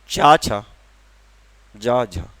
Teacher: जिनके उच्चारण में श्वास वायु मुख के किसी न किसी भाग को स्पर्श करती है, फिर रगड़ खाते हुए बाहर निकलती है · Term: स्पर्श संघर्षीय व्यंजन